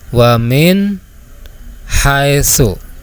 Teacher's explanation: Huruf H ini keluarnya dari tenggorokan bagian tengah. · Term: idhar halqi